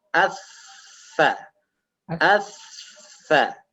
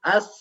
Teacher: sedikit keluar ujung lidah mengenai ujung dua gigi seri yang atas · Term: huruf tsa